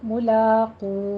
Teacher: मुलो नहीं कहना, मुलाक़ू को खौफ को पुर पढ़ना है और आगे वाव मद्दा खींचनी है 6 हरकतों के बराबर। तो मुलाक़ू के वक़फ़ नहीं करना है, आखिर पे जो हा की साउंड आ रही है उसको भी अदा करना है।